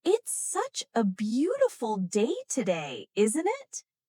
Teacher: Notice how the intonation rises at the end, making it sound like a friendly remark.